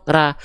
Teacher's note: Yang asalnya ra tanpa monyong nih, ra itu tipis, pangkal lidahnya gak naik. Ra menjadi ro.